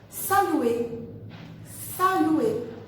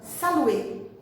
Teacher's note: Esse verbo saluer, vocês podem observar que termina com ER, mas a letra R não é pronunciada